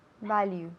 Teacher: first syllable lleva el acento.